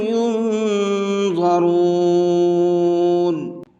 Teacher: ضا کو منہ بھر کے پڑھنا ہے